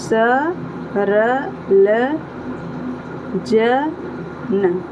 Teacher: आप जब भी बोलेंगे आपको वह व्यंजन बोलते वक्त ना आपका जो जीभ है ना वो मसूड़े को टच करेगी।